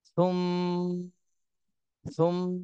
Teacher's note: সুম্মা, এখানে ওয়াজিব গুন্না করতে হবে মিমে, হরকতের বামে মিমে তাসদিদ এসেছে, এই জন্য ওয়াজিব গুন্না করতে হবে।